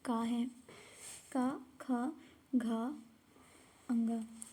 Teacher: जो का वर्ग होता है, का वर्ग हमारे कंठ से निकलता है।